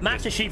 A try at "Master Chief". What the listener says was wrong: Master Chief. What about Master Chief? You said Chief. Yeah, C-H, not S-H, yeah.